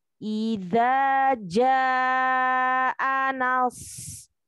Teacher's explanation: Perhatikan huruf nun, jangan sampai terbawa tebal di shad, ya.